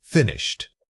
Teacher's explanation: A statement like finished should maintain a consistent, slightly falling tone from beginning to end. This solid downward movement confirms that the thought is complete and settled.